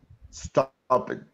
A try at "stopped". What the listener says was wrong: Now with T at the end.